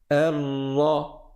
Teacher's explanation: Même quand il y a une shadda, on va bloquer la langue en fait, à l'endroit du ra, mais sans la rouler. Parce que sinon, c'est comme si on faisait plusieurs ra, alors que là, on en fait un que l'on va appuyer en restant 2 fois plus de temps.